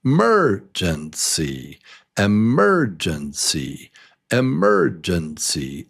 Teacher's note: It's number 2. So it's 4 beats, and number 2 is the strong syllable. Mur. So it's emergency.